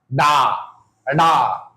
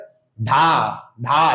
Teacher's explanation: जीभ ऊपर उठकर मूर्धा को स्पर्श करती है और झटके के साथ नीचे गिरती है। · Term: उत्क्षिप्त व्यंजन, द्विगुण व्यंजन